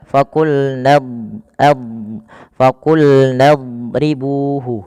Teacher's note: huruf dad itu kan makhrajnya sisi lidah kita bertemu dengan gigi raham atas